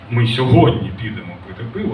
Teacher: Коли ми кажемо, е, ми сьогодні підемо пити пиво, в нас ми трішечки голосніше, ніж пиво буде наприкінці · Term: висхідна та несхідна гучність